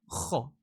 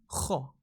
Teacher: Kho, you need to make sure your throat vibrates